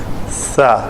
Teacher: سا کے لیے زبان جو ہے اوپر والے دونوں دانتوں سے آ کے لگے